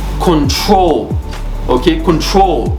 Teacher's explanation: the troll is where the emphasis is